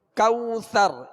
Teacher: یہاں واو لین کا قید ہے، لہذا نرمی کے ساتھ معروف طریقے سے ادا کریں گے. اور را کو آخر میں ہم ساکن کریں گے وقف کی صورت میں.